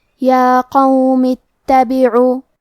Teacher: کلمت اتبعو میں تا پہ تشدید ہے تو ہم 2 حرف کے برابر تا کو پڑھیں گے